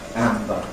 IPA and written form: ˈæmbə (amber)